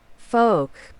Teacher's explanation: Is the L pronounced in folk? No, you do not pronounce the L in folk.